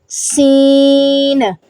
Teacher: سیٹی کی آواز سے ادا ہوگا، سین، اس میں بھی زا والا جو ہے وہ طریقہ کار آئے گا، سین، اوپر نیچے کے دانت بھی جو ہے وہ ملیں گے، اس میں سیٹی کی آواز لازمی آنی چاہیے، پھر ہی آپ کا جو سین ہے وہ اچھا ادا ہوگا۔